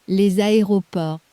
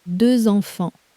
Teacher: That's the liaison. When the next word starts with a vowel, the sleeping S wakes up as a Z, purely so the sentence flows.